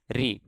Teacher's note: दरअसल संस्कृत के ऋषि स्वर का उच्चारण हिंदी में ऋ मतलब रे और ई यह दोनों का मेलजोल करके हम इसको उच्चारित करते हैं और अर्थात रे व्यंजन ई स्वर हो गया है।